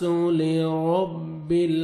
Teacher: یقوم الناس لرب را کو مرزبر ہے، را کو موٹا کر کے پڑھیں گے، با کو لام کے ساتھ ملانا ہے اور لام کو آپ نے ہلانا نہیں ہے۔